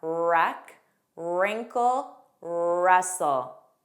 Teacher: The beginning WR spelling has a silent W pronunciation.